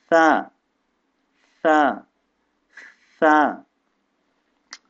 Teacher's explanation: जबान दांतों के सिरे के ऊपर को छूना है जबान की नोक से